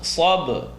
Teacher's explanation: Sa, ba is going to bounce. Sabr. You hear just that faintest ra, but it's being pronounced heavy.